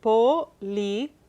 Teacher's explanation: I noticed at the end of that word, policía, the diphthong is broken. The I and the A are Correcto.